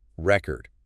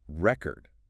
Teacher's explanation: But if you stress the second syllable, it becomes a verb.